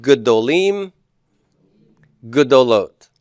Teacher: All right, so my vocal shava is there in all the other three forms because adding a, im, and ot adds another syllable, and that first syllable becomes open and propertonic, reduces the vocal shava